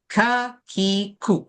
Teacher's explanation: kaf kita tengok lidah tu walaupun dari pangkal dia atas sikit yang kena dengan langit-langit